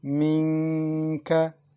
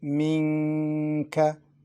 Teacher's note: We pronounce Noon unclear, also with Ghunna, to prolong it. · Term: pronounced unclear